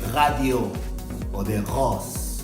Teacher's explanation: Para poder hacer la R tiene que venir de la garganta. No es como nosotros que la hacemos con la lengua